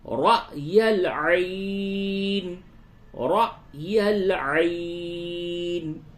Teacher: را اس جگہ پہ جھٹکا ہوگا، رائل نہیں بولیں گے، رائل نہیں ہوگا.